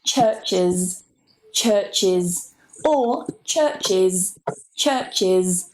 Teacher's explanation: So you can say it with a schwa or an I. There's really not that much difference in the pronunciation in rapid speech, if I'm honest, and it depends on the person's accent.